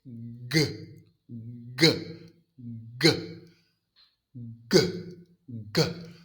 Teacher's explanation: G is made exactly the same place as C. Back of the tongue against the soft pallet. But now my vocal cords are vibrating.